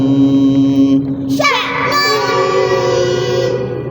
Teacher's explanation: جس حمزے کے اوپر جزم آ جائے تو اس حمزے کو تھوڑا سا پڑھتے ہوئے جھٹکا دیتے ہیں